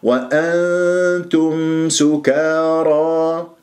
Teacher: نون تاء إخفاء، أنت أذهب إلى مخرج التاء ، ما أقول وأنتم، هكذا ذهبت إلى مخرج النون اللساني وهذا